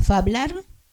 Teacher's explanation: el que escribió el poema todavía pronunciaba esa f inicial